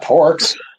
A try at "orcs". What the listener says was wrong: I do have orcs, yeah. Yeah, but the P is silent. It's pronounced orc.